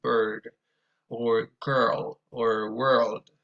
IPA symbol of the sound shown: ɝ